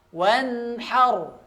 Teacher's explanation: Wan di situ ada nun dan nunnya dibaca jelas, tapi dialirkan sedikit nunnya ya, dialirkan suaranya, tidak berlebihan dan tidak juga kekurangan.